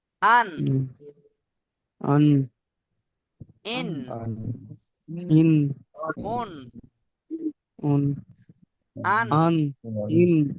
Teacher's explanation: এটাও খুব সিম্পল। নুন, জিভের আগা এবং তার বরাবর উপরে তালুর সাথে লাগিয়ে উচ্চারিত হয় নুন